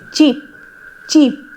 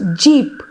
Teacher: Cheap is an example of an unvoiced affricate. Cheap, cheap, and jeep is the example of voiced